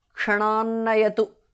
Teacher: the t in the end changes to n because of sandhi